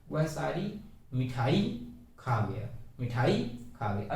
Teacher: वाक्य बलाघात करना है, अर्थात मिठाई पे हमको ज्यादा जोर देना है